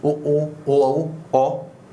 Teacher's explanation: जिन स्वरों के उच्चारण में अपने जो ओठ हैं वो क्या हो जाते हैं, गोलाकार या वृत्ताकार होते हैं, उनको कहते हैं क्या, व्रतमुखी स्वर।